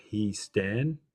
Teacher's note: the epsilon has contracted with the iota. So it's a long iota, he stan. And the on, there's no on, the omicron is replaced by the long version of the stem vowel.